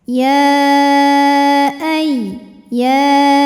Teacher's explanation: ya tasdid kita baca dengan nabr